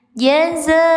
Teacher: Harus sade, harus disamar dengungkan. Samarkan ke huruf mim ya, disamarkannya bukan ke huruf ba tapi ke huruf mim. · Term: iklab